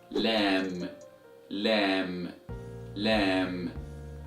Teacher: the frontal arc of the tongue from the premolar to the premolar, the colored area of the tongue where you see right now, should be pressed against the line of the gum of the upper teeth that is opposite to it. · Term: letter Lam